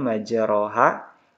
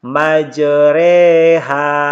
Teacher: Cara membacanya itu fathah yang dimiringkan ke kasrah dan alif yang dimiringkan ke ya, sehingga dibaca ya, dibaca dan huruf oronya ini tetap dibaca tarqiq. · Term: imalah